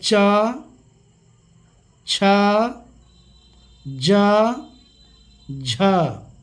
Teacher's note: जीभ का अग्रभाग जिस स्थान को स्पर्श किया है, छुआ है, वह तालु है